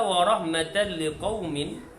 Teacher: Manakala wa rahmatan liqaumin, tanwin bertemu dengan lam, hak ni idgham bila gunnah, memasukkan tetapi tanpa dengung